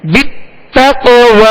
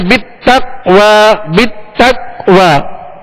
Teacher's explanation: تو تق یہ قلقلہ ہے اور تک یہ قلقلہ نہیں ہے